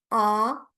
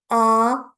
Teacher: Back vowels are the vowels that you pronounce putting your tongue to the back, like ah. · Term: unrounded back vowels